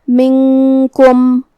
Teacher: کلمت منکم میں یہاں نون ساکن ہے، پھر حرف الکاف ہے، یہاں حکم ہے اخفاء